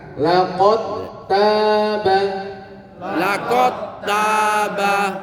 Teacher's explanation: bukan dibaca laqad taba ya, tapi dal sukunnya diidghamkan ke ta ya